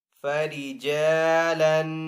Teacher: تو خواہ کو پر پڑیں گے، فَإِنْ خِفْتُمْ فَرِجَالًا أَوْ رُكْبَانًا، را کے اوپر یہاں پہ پیش ہے تو را کو پر پڑیں گے